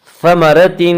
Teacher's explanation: ثمرۃ، را کو پر پڑھیں گے، اس کا قاعدہ یہ ہے کہ را کے اوپر زبر و پیش آئے تو را کو پر پڑھیں گے، را کے نیچے زیر آئے تو را کو باریک پڑھیں گے، یہاں را کے اوپر زبر ہے اس لیے را کو پر پڑھیں گے